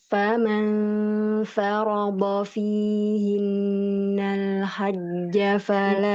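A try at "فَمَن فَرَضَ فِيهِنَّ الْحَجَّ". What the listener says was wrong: Lagi-lagi. Nah, fathah tidak panjang. Ulang lagi. Fama farodo fihinnal hajjah. Nah, fathah. Fama farodo fihinnal.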